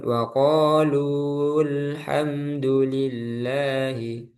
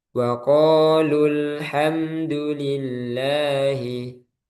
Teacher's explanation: Berarti yang pertama ini madnya tidak dibaca atau tidak panjang.